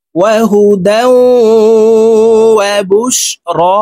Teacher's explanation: তানউইনের পরে ইদগামে বা গুন্নার 4 হরফের যে কোনো একটি হরফ আসলে গুন্নার সহিত মিলাইয়া পড়তে হবে। তো এই দাল তাসদিদওয়ালা ওয়ার সাথে গুন্নার সহিত মিলাইয়া পড়তে হবে। দেখুন এভাবে পড়ব, ওয়াহুদাও, ওয়াও জবর ওয়া, বা শিন পেশ বুশ, র খারা জবর র, ওয়াহুদাও ওয়াবুশ র। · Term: ইদগামে বা গুন্নাহ